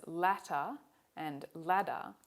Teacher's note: in the middle of the words it sounds more like latter they're actually saying another sound which involves the tongue quickly moving up from its rest position to strike the alveolar region coming down again it's sort of like a flicking motion the symbol for it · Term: tap